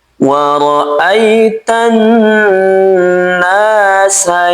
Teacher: Jadi aita pastikan mengarah ke e ya sukun. Jangan sampai dimiringkan ke huruf ee atau terkesan imalah. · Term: lin